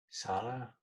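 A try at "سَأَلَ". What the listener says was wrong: Sa'ala. Yeah, this stop. Sa'ala. Sa'ala. If there was no Hamza here, you would read it as Sala, right? Sala. The Hamza, make sure you stop in the middle. Sa'ala.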